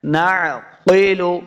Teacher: قاف حروف مستعلیہ سے ہے، اس کو موٹا کرنا ہے